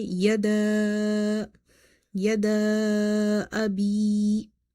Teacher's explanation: here ya is madda, because before ya sakina you see kasra. · So you will stretch this alif of the word yada up to 2.5.